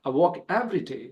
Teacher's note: So I don't have to emphasize more with the pronoun I